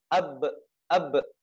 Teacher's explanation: menggunakan dua bibir bibir atas dan bibir bawah